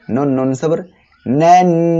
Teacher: নুনের তাজদিদ হয়েছে, ওয়াজিব গুন্না করতে হবে।